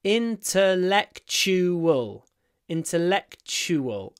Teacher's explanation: don't forget it the next one intellectual I enjoy intellectual conversations at the end we have a tu I pronounce it CH intellectual intellectual and the UA has a w intellectual intellectual intellectual